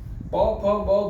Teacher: પ ફ બ ભ બોલશો તો નાકમાં ફીલ નહી થાય કઈ